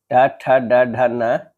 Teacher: मूर्धन्य कहलाती है। इनका उच्चारण जीभ के अग्र भाग से मूर्धा यानी कठोर तालु पर होता है।